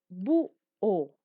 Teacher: La mayor intensidad de voz está en la U.